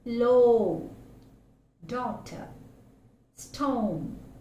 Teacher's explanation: when the sound is articulated, the back part of the tongue is raised towards the soft palate and the lips are fully rounded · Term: long vowel